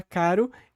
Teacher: é só uma um pequeno tapinha ali na no ponto de articulação